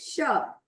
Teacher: अब ये स कैसे खोलते हैं, अगर मेरा श पूरे जीभ को मोड़ के जा रहा है तो उसमें हम क्या कहते हैं, श। जैसे शंख, हमारा जीभ पूरा मुड़ रहा है अंदर की तरफ, मतलब कि हमारे ऊपर के जो भाग है उसको टच करते हुए, यानी कि हमारे ताल को टच करते हुए अगर हमारी जीभ बोल रही है तो वो क्या हो जाएगी, हमारी तलबेश वाली श, जैसे शंख।